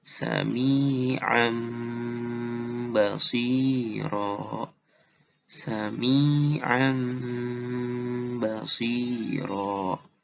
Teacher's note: Tapi kalau pakai peraturan tajwid, peraturan iklab namanya, nggak kayak gitu. Tanwinnya diubah jadi bunyi mim. · Gak kedengaran kan tanwinnya? Karena udah diganti sama bunyi mim. Gitu. Jadi kalau tanwin ketemu ba, tanwinnya jadi bunyi mim.